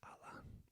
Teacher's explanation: similar to the sound in father, a, but more central